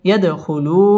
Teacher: দাল কলকলার হরফ ধাক্কা দিয়ে পড়তে হবে